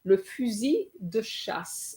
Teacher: we have an S between two vowels, so we're going to have a Z sound.